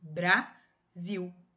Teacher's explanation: no encontro consonantal eu escuto o som das duas consoantes. Brasil, eu escuto o som do B e do R.